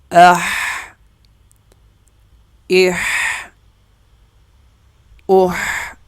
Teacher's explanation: یہ گلے کے درمیان سے ادا کیا جا رہا ہے